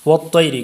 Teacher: اس پر یا لین کا قاعدہ ہے اس لیے اس کو لمبا نہیں کریں گے